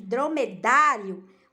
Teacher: o som mais forte está no da na penúltima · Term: paroxítona